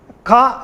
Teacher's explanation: When you pronounce that sound, if the vocal cords are vibrating, you can understand that consonant is a voiced consonant. When you pronounce K sound or ka sound, your vocal cord is not vibrating. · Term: voiceless sound